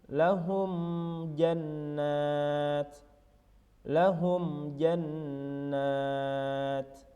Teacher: jadi bacanya biasa saja tidak dengung tidak samar-samar jelas saja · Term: izhar syafawi